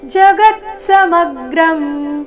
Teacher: ಎಲ್ಲಾ ಅಕ್ಷರಗಳು ರಸ್ವ ಗ ಮತ್ತೆ ಮೇಲೆ ಆಘಾತ ಬರಬೇಕು